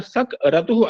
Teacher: ककार के उत्तर में यति होने पर सक रतुः ऐसा उच्चारण होता है